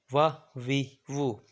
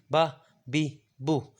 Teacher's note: فا اور واو اور با میم یہ ایک جگہ سے ادا ہوتے ہیں، اس کو شفویہ کہتے ہیں، ہونٹوں سے ادا ہوتے ہیں